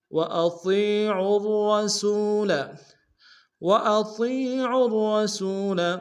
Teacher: اطیعوا اللہ واطیعوا الرسول، واطیعوا الرسول، طا کو یا کے سامنے لیں گے، یا مدہ کے انداز میں کھینچیں گے، عین کو را کے سامنے لیں گے، را کو تشدید زور دیں گے، دونوں را کو موٹا ادا کریں گے، سین کو واو کے سامنے لیں گے، واو مدہ ایک انداز میں کھینچیں گے۔